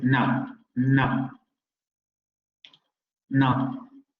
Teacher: Notice the unrounded pronunciation of no.